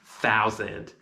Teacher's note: the letter s in that word is not making a s sound it's making a z sound